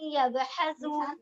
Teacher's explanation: یب با کے اوپر تھوڑا سا قلقلہ آئے گا, یعنی ایکو آئے گی